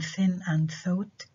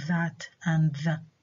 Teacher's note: the friction is created as the air passes over the tongue and past the upper front teeth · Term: interdental fricatives